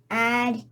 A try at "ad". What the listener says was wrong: Nope, not add. Let's start saying ah. Always ah.